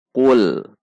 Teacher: Hati-hati lam sukun dibaca tidak dengan memantul. Tidak dibaca dengan qul.